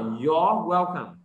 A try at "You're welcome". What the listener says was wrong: Your, chữ R-E cuối con phải uốn lên đây nào. Ok, move your tongue.